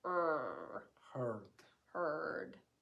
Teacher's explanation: the e and the r make a diphthong a murmured diphthong